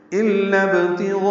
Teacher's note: یہ حمزہ عارضی ہے ابتغاء کا، با ساکن ہے قلقلہ ہوگا